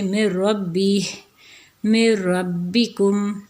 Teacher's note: سب سے پہلے دیکھیں تو یہاں پہ ہمارے پاس ہے نون، نون کا را میں ہو رہا ہے جیسے میں ربی، میں ربکم، تو یہاں پہ ادغام تام ہو رہا ہے کیونکہ نون بالکل جو ہے وہ پڑھنے میں نہیں آ رہا، میں مطلب میم کو ڈائریکٹ را کے ساتھ اٹیچ کریں گے، میں ربی، اور کیا ہے جی میں ربکم۔